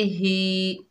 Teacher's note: हा के नीचे खड़ी ज़ेर है, एक अलिफ की मिकदार खींच कर पढ़ेंगे